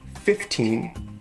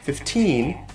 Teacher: You could say 15 and put the stress on the first syllable, or you could put the stress on the second syllable, 15, but most common, I think, is to put an even stress on both syllables, 15.